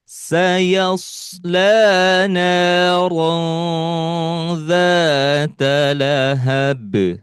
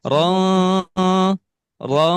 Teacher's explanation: ron ini dibaca disamarkan ya, disamarkan, didengungkan dan ditahan selama 3 ketukan lamban ya.